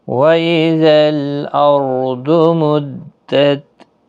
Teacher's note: ضاد حروف مستعلیہ ہے، پر پڑھا جائے گا